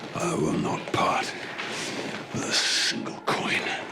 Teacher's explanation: you can hear the almost sibilant S of the dragon coming out